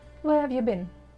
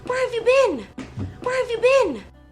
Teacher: been with stress because it is a main verb